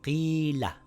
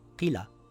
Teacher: so it's a long vowel it reads Qiila, not Qila, Qiila stretching it for two counts